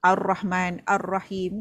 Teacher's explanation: Ini disebut idgham syamsi sebab huruf lam ini telah dimasukkan ke dalam huruf syamsiah eh. Jadi dia tak berbunyi lah.